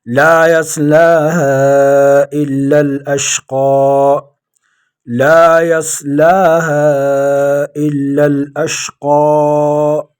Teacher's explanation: لا يصلاها إلا الأشقى لا يصلاها إلا الأشقى لا مد اصلی، یصلا یہ بھی مد اصلی، ہا مد فرعی 4 یا 5 الف کی مقدار اس کو کھینچیں گے۔ الا لام کو باریک پڑھیں گے۔